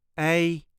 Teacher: There is a light emphasis on meer.